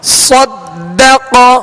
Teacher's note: قاف پر زبر ہے لہذا اس کو کھینچیں گے نہیں، اور حروف مستعلیہ میں سے بغیر ہونٹ گول کیے اسے پر یعنی موٹا پڑھنا ہے.